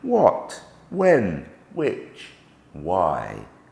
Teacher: The H is silent, and so we simply make the sound w